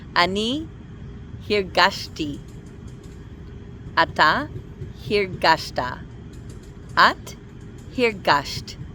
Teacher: in the past tense the stress is always going to be on the second syllable